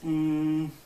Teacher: You make the N sound and then you turn off your vocal cords. Is basically just breathing through your nose. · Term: voiceless N